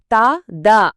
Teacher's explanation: అలాగే త ద అనేటప్పుడు నాలుక కచ్చితంగా పళ్లను తాకుతుంది